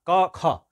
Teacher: और दूसरा तो पहला और दूसरा क ख ये जो है झटके से जो है बोल देते हैं इसमें झंकार नहीं होता है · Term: अघोष